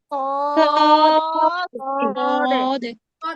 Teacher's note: সদ বলার সময় বাতাস বের হবে না